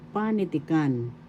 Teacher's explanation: The accent is in first syllable panitikan.